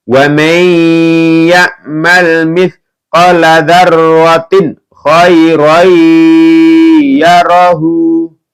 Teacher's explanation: Dan wa may, ini idgham bi gunah ya, masuk dengan mendengung ya